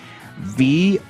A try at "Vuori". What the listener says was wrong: No. It's an I. That is an I, not an E.